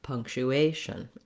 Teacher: there is secondary stress here on this punk syllable but the main stress in words that have a t i